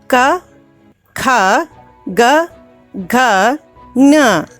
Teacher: This is grouped as ka vargaha and is pronounced with the help of kantayaha.